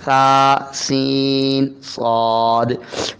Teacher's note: सीन की सीटी वाली और बारीक आवाज है · ثا نرم آواز ہے، باریک آواز ہے، سین کی سیٹی والی اور باریک آواز ہے، صاد کی سیٹی والی اور موٹی آواز ہے